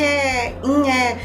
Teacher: eles colam a ponta da língua no céu da boca e o choro fica um nhé, nhé. Esse choro normalmente é fome, porque eles estão sugando. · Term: choro de fome